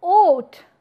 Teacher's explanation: when you say oat you see that your lips are being rounded in order to produce this rounded W while there are words